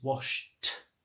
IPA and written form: wɒʃt (washed)